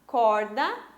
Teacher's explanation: Corda, penúltima sílaba tônica, paroxítona